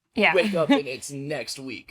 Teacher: she's starting to go into a little bit of vocal fry here, which is not attractive.